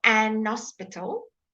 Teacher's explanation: there are parts of England where you can say an hospital because they don't say their H's